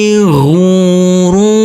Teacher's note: Huruf fa kita baca pendek, huruf alifnya kita anggap tidak ada. Huruf ro di sini tanwinnya kita rubah menjadi fathah dan kita baca panjang dengan panjang dua harakat.